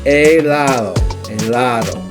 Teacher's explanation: Now when you say it, you don't say the H sound. You don't say the H like you do in English or hello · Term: silent letter